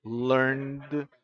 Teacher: el sonido de la N, learned. Hay vibración de cuerdas vocales.